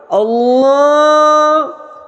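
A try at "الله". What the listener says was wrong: اللہ یار اللہ اللہ کری جا رہے ہو، یہ تو مدینے والی طرز ہے۔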